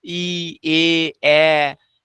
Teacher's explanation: সম্মুখ স্বরগুলো মূলত একটু হলেও প্রসারিত মানে কি রকম উচ্চারণের সময় ঠোটটা ছড়িয়ে থাকবে · উচ্চারণের সময় ঠোঁটটা আহ ছড়িয়ে থাকবে, ছড়িয়ে থাকবে। ই, এ, এ, ঠোঁটটা জড়ো হয়ে থাকছে না, ছড়িয়ে থাকছে। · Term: প্রসারিত স্বরধ্বনি